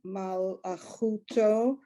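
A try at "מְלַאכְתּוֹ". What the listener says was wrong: Malachto. The Aleph is just go over it. Malachto.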